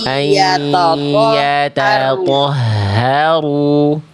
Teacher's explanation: Tanya tipis, to-nya tebal.